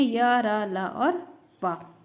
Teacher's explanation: अब बात कर लेते हैं अंतस्थ व्यंजन की। इन वर्णों के उच्चारण में मुख से निकलने वाली वायु का मार्ग जीभ, तालु, दांत और होठों के परस्पर सटने से कुछ सकरा हो जाता है, किंतु कहीं भी पूर्ण रूप से स्पर्श नहीं कर पाता।